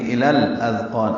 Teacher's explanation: الاذقان کا حمزہ عارضی ہوتا ہے، لام ساکن پہ اظہار قمری ہے، حمزہ کی وجہ سے زال نرمی سے پڑھیں گے. قاف پر ہے، اس کا الف مدہ بھی پر ہے.